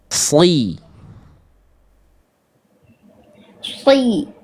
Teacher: Angkat pangkal lidah. Oke, coba sekarang lebih angkat pangkal lidahnya biar bunyi SHnya nampak tebalnya. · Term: huruf tebal